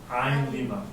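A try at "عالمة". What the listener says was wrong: Yeah. Not ain. Alima.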